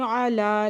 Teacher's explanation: لام کے اوپر کھڑا زبر ہے، دو حرکت کھینچ کے پڑھیں گے.